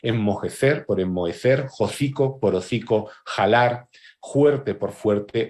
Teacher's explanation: También aparece la aspiración de la F